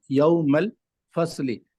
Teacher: صاد حروف مستعلیہ سے ہے اور ہمیشہ پر پڑھا جائے گا